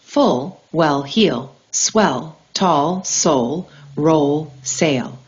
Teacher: Contact occurs near the alvolola ridge. Air flow continues around the sides of the tongue. The sound is not fully blocked. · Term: the L sound